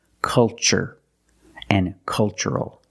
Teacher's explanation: the first syllable is a short u like cup and up uhuh make a relaxed sound